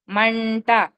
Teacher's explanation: మండలం అక్కడ వచ్చే డా ముందు వచ్చిన అనుస్వరం అణా కింద పలుకుతాము.